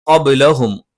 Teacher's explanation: ക നാവിന്റെ ആരംഭം മേലെ അണ്ണാക്കിലാണ്. മ രണ്ട് ചുണ്ടും തുല്യമായി അടച്ചു വെക്കണം.